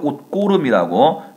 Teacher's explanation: 옷고름 시옷으로 표기되어 있습니다만 발음은 디귿으로 되죠